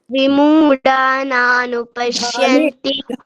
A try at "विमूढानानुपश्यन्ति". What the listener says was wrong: ಢಾ ಮಹಾಪ್ರಾಣ ಇದೆಯಲ್ಲ ಅದನ್ನ ಢಾ ಅಂತ ಹೇಳಬೇಕು ಆಯ್ತಾ ವಿಮೂಢ ನಾನು ಪಶ್ಯಂತಿ